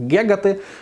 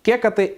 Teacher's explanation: на частині території України у звуконаслідуваннях вживається звук Ґ